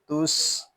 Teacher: تا سین پیش تس، یہاں سین جو ہے یہ حروف صفیریہ میں سے ہے، اس میں سیٹی کی آواز آئے گی، سین ساکن ہے، اس کو سکون کے ساتھ ادا کریں گے۔